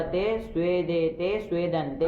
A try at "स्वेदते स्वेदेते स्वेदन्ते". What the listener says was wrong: हाँ ऐसे ही।